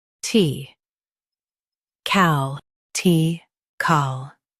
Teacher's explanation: Stress cal and keep T light